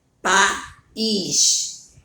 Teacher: o A fica em uma sílaba, o I fica em outra sílaba. Então, aí eu tenho um encontro vocálico chamado de hiato.